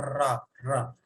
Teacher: रा, जीव में लुंठना होगी, जीव में लुंठना होगी। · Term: लुंठित